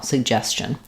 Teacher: So just an unstressed last syllable there with a reduced vowel